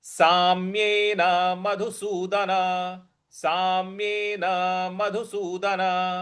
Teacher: साम्यन सा के बाद आधा म है उस पर हमको आघात देना है